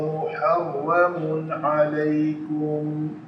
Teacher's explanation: یہاں پہ تنوین کے بعد عین ہے حروف حلقی میں سے، تو تنوین کا اظہار کریں گے